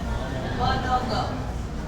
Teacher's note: nasal sounds के उच्चारण में हमारा वेलम लोअर्ड रहता है, सॉफ्ट पैलेट लोअर्ड रहता है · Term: नेजल कॉन्सोनेंट्स